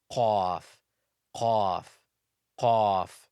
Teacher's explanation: Qaf is pronounced from the deepest part of the tongue, so the closest to the throat and the furthest from the mouth.